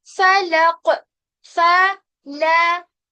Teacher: कॉफ को मोटा करना है, बाकी फा और लाम को बारीक करना है